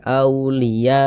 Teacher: atau dalam satu kata maka dia namanya menjadi mad wajib muttasil panjangnya itu 4 sampai 5 harakat empat harakat sampai 5 harakat